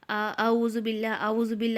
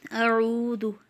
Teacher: حمزہ اور عین ایک ساتھ ہے تو اعو واضح ہونا چاہیے، دونوں کو ا نہیں کر دینا اور نہ ہی دونوں کو آ کرنا ہے۔